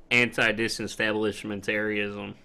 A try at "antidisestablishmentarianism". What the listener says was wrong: You're pronouncing that wrong. Yes. you put like an N in the middle of it. Anti-disestablishmentarianism.